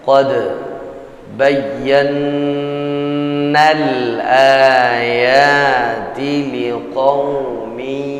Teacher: Qad bayyana al-ayati liqaumin yuqinun. Perhatikan nun musyaddadah kita baca dengan wajib gunnah pada huruf nun yang bertasydid. 2-3 ketukan.